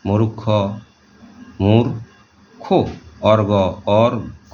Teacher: রেফযুক্ত শব্দটি যদি মহাপ্রাণ হয় তাহলে প্রথমে উক্ত মহাপ্রাণ বর্ণের পূর্বে অল্প প্রাণ ধ্বনিটি উচ্চারিত হয়, পরে মূল ধ্বনিটি উচ্চারিত হয়। যেমন মূর্খ, মূর্খ, অর্ঘ, অর্ঘ।